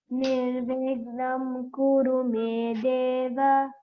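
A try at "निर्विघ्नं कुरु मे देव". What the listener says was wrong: There you see Nirvigham, Gha Mahaprana. Nirvigham Kuru Me Deva. Okay, now you have to improve on the aspirated ones. GHA, Gha.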